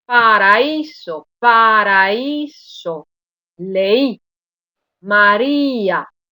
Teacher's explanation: Paraíso, paraíso, leí, María. Notáis que estoy colocando la mayor intensidad en la vocal débil, no en la vocal fuerte. Esto es lo que me permitirá distinguir al hiato del diptongo.